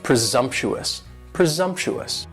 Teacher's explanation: presumptuous has four syllables and the stress is on that second syllable and the S almost sounds a little more like a Z